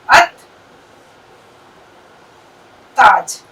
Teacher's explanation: मिसाल के तौर पर मैं आपको बताऊं, जैसे हमने लिखा अल, देखो अलिफ, लाम, ते, अलिफ और जीम, لیکن میں نے قاعدہ کیا بتایا، جتنے بھی یہ حروف شمسی ہے، لام جو ہے اس کی آواز نہیں نکلے گی، یہ خاموش ہو گیا. سیدھے الف سے لام کے بعد جو بھی حرف آیا اس سے ہم اس کو جوڑ دیں گے.